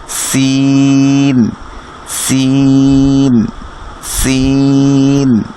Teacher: নিচের দাঁতের মাঝখানের সাথে লেগে অথবা নিচের দাঁতের একটু আগার সাথে লেগে জিহ্বার আগাটা লাগবে আর কি, জিহ্বার আগাটা, আপনার জিহ্বার আগাটা নিচের দাঁতের মাঝখানে অথবা তার আগার দিকে, নিচের দাঁতের মাঝখান অথবা আগার দিকে লেগে লাগিয়ে দিবেন। · রর মতো দেখতে, তার উপরে যদি একটা ডট থাকে সেটা হচ্ছে জা, সেটাও একই জায়গা থেকে উচ্চারিত হবে সিন, সিন, জা, জা। হ্যাঁ, তাহলে সিনের উচ্চারণ হচ্ছে জিহ্বার আগা তার নিচের দাঁতের মাঝখান অথবা আগা থেকে লাগিয়ে আমরা সিনটাকে বলবো